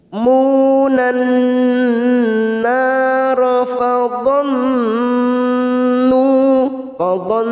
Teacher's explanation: nun yang bertasdid gunna musaddada kita tekan 3 ketuk